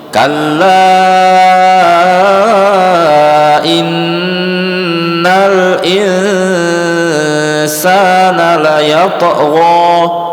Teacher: Kalla 4 harokat mad jaiz munfasil.